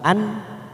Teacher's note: nun sukun bertemu Hamzah namanya bacaan idhar halqi kita baca jelas tanpa mendengung